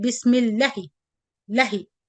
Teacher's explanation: You know, if there is no alif, I supposed to read it bismillahi, lahi. So the lam will be short, then I attach it with the ha direct. But if you hear it from any sheikh, you will find that he stretched two vowel counts.